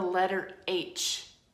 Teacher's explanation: my vocal folds are wide open so air can pass through freely. That's a voiceless sound.